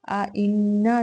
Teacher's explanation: نون مشدد ہوگا، اس میں غنہ کی صفت کے ساتھ ادائیگی ہوگی اور الف مدہ بھی ہوگا، 2 کاؤنٹس لمبا کریں گے۔